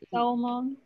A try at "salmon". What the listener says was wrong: In this case, we don't pronounce the L. Don't pronounce no,